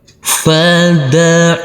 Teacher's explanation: Huruf ain yang berfathah a bertemu dengan wau sukun, kita lembutkan karena ini adalah bacaan lain. Huruf mim sukun ini cara bacanya sama dengan huruf m.